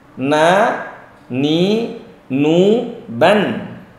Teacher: Kemudian yang kedua adalah huruf na. Na sama ujung lisan naik ke langit-langit, bukan tegak sekali.